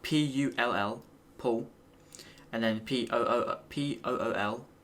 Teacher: So I say Paul for all of them.